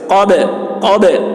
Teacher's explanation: با بھی حروف قلقلہ میں سے ہے، اس پر جزم ہے تو با میں قلقلہ، جیسے قب، قب، آواز ٹکرائے گی۔